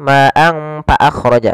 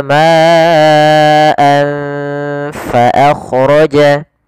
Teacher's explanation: Kemudian fa jangan dibaca dengan pa.